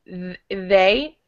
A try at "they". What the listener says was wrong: It's just when you're reading it, your TH is disappearing a little bit. So make sure you get your tongue out when you're doing it.